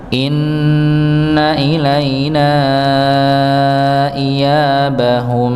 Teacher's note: huruf nun bertasydid, maka didengungkan ya, gunnah musyaddadah, gunnah dengung dikarenakan ada syiddah di situ, ada tasydid, maka ditahan inna